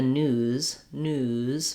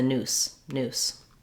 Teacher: my ooh is going to be longer than if i was saying it's in the noose noose you can hear my vowel is shorter and then i · one of the ways that we show that it's a z sound is that we hold the vowel a little longer